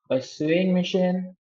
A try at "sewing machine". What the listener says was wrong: this word is not sue. This word is pronounced as sew. Like so.